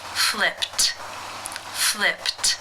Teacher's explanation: the final sound of the verb is P which is unvoiced therefore it is case one and the Ed is pronounced as a t